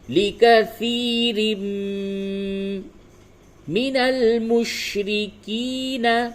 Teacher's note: تنوین کے بعد میم آ رہا ہے، ادغام مع الغنہ کرنا ہے